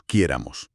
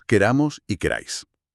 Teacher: Al quitarle el peso de la voz a la raíz, la vocal ya no necesita fracturarse para soportar el estrés, se relaja. · al decir nosotros, la palabra se alarga y el acento se desplaza hacia el final, hacia la terminación